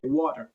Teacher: Non-native speakers might say water, but the native speakers use that T more as a soft D